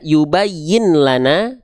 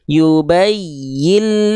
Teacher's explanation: Nun sukunnya dileburkan keelam tuh makanya ada tanda tasdid ya yubayillana ketika dileburkan tanpa dengung jadi enggak perlu ditahan